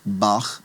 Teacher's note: So the letter gets that guttural soft guttural sound and it's uh transliterated many times as ch. So like in the name Bach, it'll get that guttural sound.